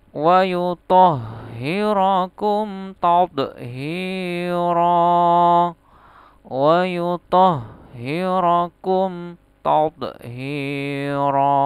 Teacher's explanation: Jadi kalau ini mim sukun bertemu ta bukan ikhfa safawi tapi idhar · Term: idhar safawi